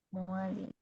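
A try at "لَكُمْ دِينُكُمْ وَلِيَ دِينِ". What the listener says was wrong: Nggak boleh kasih dengung, harus langsung dibaca.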